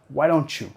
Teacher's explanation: T seguido por Y vamos a vincular con el sonido ch, ch. Why don't you?